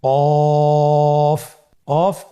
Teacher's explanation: কাফের মাখরাজ হলো জিহ্বার গোড়া থেকে একটু আগে বাড়িয়ে তার বরাবর উপরে তালির সঙ্গে লাগিয়ে উচ্চারিত হয়।